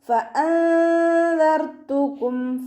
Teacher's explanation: മേലെ മുൻപല്ലിൻ്റെ അറ്റം താഴെ ചുണ്ടിൻ്റെ ഉൾവശത്ത് വെറ്റായിട്ടുള്ള ഭാഗത്ത് കൊണ്ടിട്ട് വെക്കുക